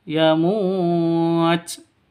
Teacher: Ini panjangnya boleh dua, boleh empat, boleh enam. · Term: mad arid lukun